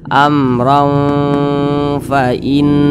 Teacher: kepada huruf ikhfa Hakiki ausat maka tanwin berjumpa dengan huruf Fa hukumnya adalah ikhfa dibaca samar dan juga berdengung Amr didengungkan itu suaranya itu kita tahan atau kita panjangkan kira-kira